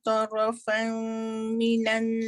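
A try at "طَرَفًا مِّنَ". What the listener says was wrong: Dia idgham bi gunnah. Liyaqta'a tarafam.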